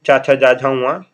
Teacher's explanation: च ये क्या हो जाएगा? ये हो जाएगा तालव्य।